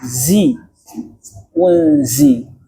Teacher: zai punya sifat yang namanya sofir